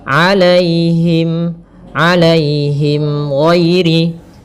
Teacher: Alaihim di sini ada ya sukun yang didahului dengan fathah. Ini kita namakan dengan bacaan lin. Maka lembut dalam pelafalannya.